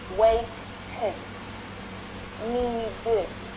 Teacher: The extra unstressed vowel sound makes them quite easy to pronounce.